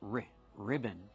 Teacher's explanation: put the stress on the first syllable